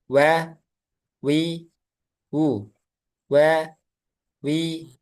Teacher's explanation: kedua bibir dimonyongkan ke depan dengan membuka sedikit celah, yaitu huruf wau. Jadi, huruf yang dimonyongkan itu hanya huruf wau.